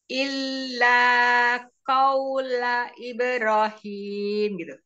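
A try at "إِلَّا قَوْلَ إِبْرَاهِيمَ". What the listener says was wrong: Roknya juga harus panjang. Ibrahim.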